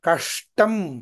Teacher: కకార అకారముల తర్వాత తాలవ్య శకారం ఉండదు మూర్ధన్య శకారం ఉంటుంది